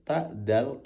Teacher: Tak, dal, to itu satu tempat, yaitu ujung lidah yang ditempelkan tempat tumbuhnya gigi seri atas